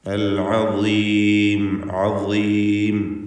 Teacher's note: നാവിൻ്റെ അറ്റത്തിൻ്റെ മുകൾ ഭാഗവും മേലെ മുൻപല്ലും അതിനിടയ്ക്ക് ഇങ്ങനെ അല്പം ലൂസാക്കി തഫ്ഖീമോടുകൂടി ഉച്ചരിക്കേണ്ട അക്ഷരമാണ് വാ. അൽ അദീം അദീം കസ്റ അതുകൊണ്ട് കുറഞ്ഞ തഫ്ഖീമാണ് വാഇന് ഉണ്ടാവുക.